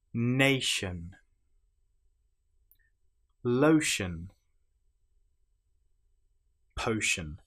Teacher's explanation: You will notice that the ti here is pronounced exactly the same as the sh sound. But of course, if you don't know this, you may say notion or natian.